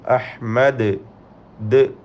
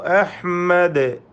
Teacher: അഹ്മദ് വഖഫ് ചെയ്യുമ്പോൾ ദാലിനെ കേൾപ്പിച്ചുകൊണ്ട് ഖൽഖല ചെയ്ത് സുക്കൂൻ വ്യക്തമാക്കി ഉച്ചരിക്കണം. അഹ്മദ് ദ് എന്ന് കേൾപ്പിക്കണം.